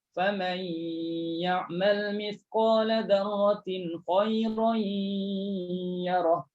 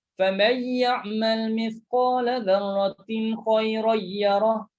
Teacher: Ada dengung dan ada tekan pada huruf ya.